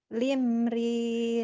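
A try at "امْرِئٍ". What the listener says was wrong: bukan lam ini i alif im imriin.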